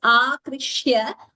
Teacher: We should not pronounce an extra k there. It should not be heard